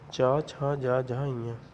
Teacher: तालु के अंतर्गत चा वर्ग आता है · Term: तालव्य वर्ण